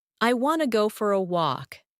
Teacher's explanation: when a native speaker says I want to, it often sounds like I wanna. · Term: reduction